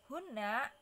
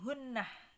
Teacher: Jadi kalau di waqaf menjadi hunnah gitu. Jadi ditambahin ha sakat ya, ditambahin ha sukun gitu, menjadi hunnah kalau waqaf.